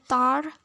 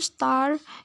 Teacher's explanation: the t sound in the word tar is normally pronounced with the stronger puff of air than is present in the t sound in the word star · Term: aspiration